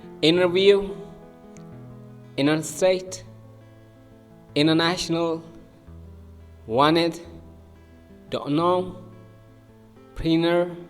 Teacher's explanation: In most of when T is after the N, we might say interview to interview. When T comes after N, the T sound is stopped in many words.